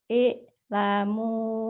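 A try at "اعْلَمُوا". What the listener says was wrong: kurang ainnya. Ir, ir, kurang, kurang. Ir, ir. I'lamu an i'lamu an gitu ya.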